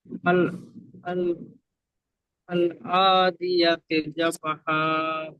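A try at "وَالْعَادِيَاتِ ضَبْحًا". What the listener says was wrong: আপনি প্রথম, আপনি তো শুরুতে আছেন, আল নেই, দেখেন এখানে ওয়াও লাম জাবার ওয়াল, ওয়াল আদিয়াতি দবহা।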